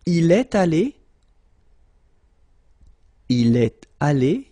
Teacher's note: You've got this little liaison between the two.